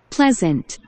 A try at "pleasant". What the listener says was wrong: Pleasant. S 소리가 Z 됐습니다. Z. S가 뭐야? S가 Z가 S나 Z가 돼. S는 Z. 그래서 Pleasant. Pleasant.